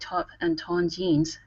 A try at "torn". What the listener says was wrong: Give me a good R here instead of ton. Okay, curve your tongue upwards when pronouncing that R. It's tore, torn.